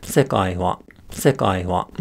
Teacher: the first syllable of the word is high and then all the remaining syllables are low including the particle that attaches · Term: atamadaka